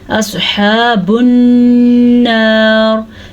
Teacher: स्वाद को पुर पढ़ना है, हा के तलफ़्फ़ुज़ का ध्यान रखना है और नून का गुन्ना अदा करना है